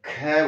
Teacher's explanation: ख एकदम मुंह से हवा बहुत तेज से बाहर निकल रही है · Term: महाप्राण